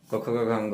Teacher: क वर्ग का उच्चारण स्थान कंठ होता है।